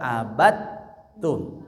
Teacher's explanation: Huruf yang pertamanya hilang sama sekali. Ya, diganti dengan huruf yang kedua · Dalnya itu lebur ke huruf ta sehingga ada proses dalnya jadi huruf ta sukun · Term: idgham kamil